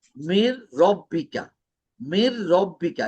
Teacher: এখানে ইদগাম হবে, নুন তো উচ্চারণ হবে না, মির, মির রব্বিকা, এখানে গুণা হবে না